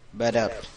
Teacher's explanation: So you're practicing the L, the R, and then what we call the flap. It's kind of like a soft D, which is typically the T when it's in the middle of a word.